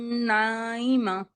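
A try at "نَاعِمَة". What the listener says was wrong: आइन को वाजे करे, नाइमतुन या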